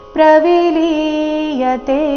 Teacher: ಇಲ್ಲಿ ಪ್ರವಿಲೀಯತೆ ನಲ್ಲಿ ಲಿ ದೀರ್ಘ ಇದೆ ಕೊನೆಯತೆ ದೀರ್ಘ ಇದೆ.